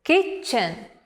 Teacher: the word kitchen the stress is on the first syllable